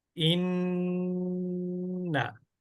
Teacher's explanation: খেয়াল করেন তারপরে জবর ইন তারপরে ইন তারপরে পেশ ঠিক আছে তাজদিদের প্রথম উচ্চারণে গুন্না হবে